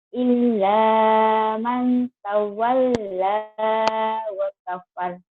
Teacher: Illa, lanya double dan nyamber.